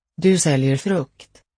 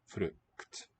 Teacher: Listen to the delay in the release of the K and the T. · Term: final clusters